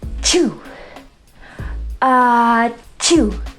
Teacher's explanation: And you're going to do that by getting that tongue nice and tight against the palate and releasing it quickly to get that puff of air coming out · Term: CH sound